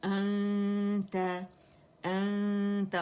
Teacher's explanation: हमजा जो है ये अक्सल हल्क से फार थ्रोट से अदा होगा